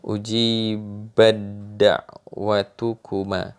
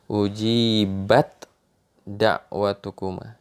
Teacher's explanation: Jadi taknya dibuang sama sekali.